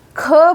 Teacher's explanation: यानी इसके उच्चारण में सांस का प्रयोग कम हुआ है। और ख महाप्राण वर्ण है। यानी इसके उच्चारण में प्राण वायु का प्रयोग अधिक श्रम से हुआ है।